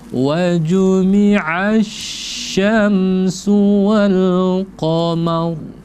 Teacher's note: maka ketika dia ada tasdid, maka seperti ada jeda di sana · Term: huruf shin